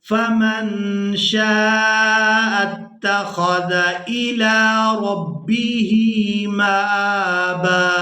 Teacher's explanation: نون ساکن پر اخفا کریں گے, آواز ناک میں جائے گی اور اس آواز کو کچھ دیر ناک میں روک کر رکھیں گے